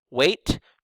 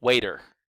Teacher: we change from a T to a flap